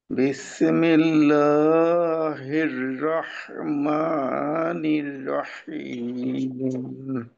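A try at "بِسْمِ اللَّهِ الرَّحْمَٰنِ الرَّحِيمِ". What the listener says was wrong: সিনকে ছাড়ার সময় যেন বি এরকম না হয়ে সুন্দর মত সিন শেষ হয়ে যাবে।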